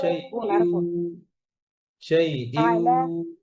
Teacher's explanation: সেই ইউ সেই এভাবে কিন্তু না, ঠোঁট গোল করে, কেউ ওয়া হচ্ছে ঠোঁট গোল করে, দুই ঠোঁট গোল করে উচ্চারণ হয়